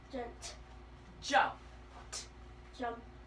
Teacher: suffix ed at the end of jump was going to sound like a T